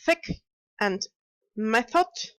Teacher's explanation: are both pronounced more or less the same way in which the tongue stretches to the front and the tip almost touches the upper teeth